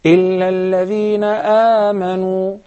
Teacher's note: If you begin with the word آمَنُوا, still you apply مَدُّ الْبَدَلْ حَرَكَتَيْن.